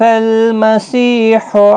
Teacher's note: سی یا مدہ ہے، ایک الف کی مقدار کے برابر کھینچ کر پڑھیں گے